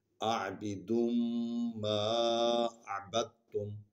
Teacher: دال کو میم میں شامل کریں گے کیونکہ یہاں میم پر شد ہے، تو یہ کلیہ ہے کہ ہم اس میں اس کو ادغام کریں گے۔